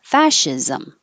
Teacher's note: just hold it and then release the l absolutely absolutely fascism this last part ism can sound like zom or zim again you won't notice because it's not stress so it'll be really short